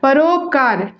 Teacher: आ और उ मिलकर के ओ बना रहे हैं